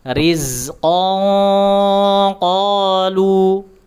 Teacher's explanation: disamarkan terlebih dahulu tanwinnya, kemudian diarahkan ke huruf qaf dan diberikan sifat tebalnya. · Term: ikhfa